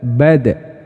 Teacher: Karena kenapa dal itu kayak mantul? Karena dia juga memiliki sifat yang namanya qalqalah